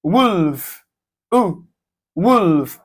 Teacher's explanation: So the sound is a short back vowel sound, U.